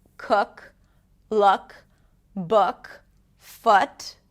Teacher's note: it's like the casual partner of the tense oo. It's more relaxed.